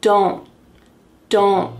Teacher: Do not. And that t is just going to be stopped at the top of your mouth